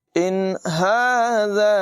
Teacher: ذال کو بغیر سیٹی کے ادا کریں گے